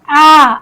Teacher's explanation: आप जब आ बोलते हैं तो आपका पूरा मुंह यह खुला हुआ रहता है। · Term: विवृत स्वर